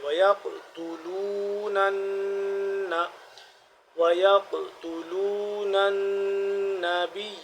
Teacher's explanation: یہاں پہ قلقلہ بھی ہو رہا ہے اور قاف موٹا بھی کریں گے